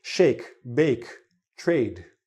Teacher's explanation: bit longer it's a called a diphthong because it's a e it's like almost two vowel sounds in one